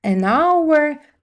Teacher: Не дивлячись на те, що він починається з з приголосної букви, вона не читається. І ми використовуємо a, тому що з голосного звуку починається.